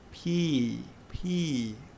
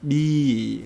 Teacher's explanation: when you touch your throat again with the voice sound like use the vocal cord and they produce a vibration or humming sound